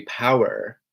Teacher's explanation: in the American accent, it'll be power, so you can hear kind of like the R sound rolled and kind of sounding like a pirate, power.